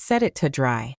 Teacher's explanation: You put your tongue on the roof of your mouth, but you do not push any air out. Finally, the word to gets reduced to just a quick T sound